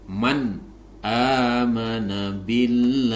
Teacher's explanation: mana ini adalah nun sukun bertemu dengan Hamzah atau Alif maka ini disebut izhar halq cara membacanya dibaca jelas nunnya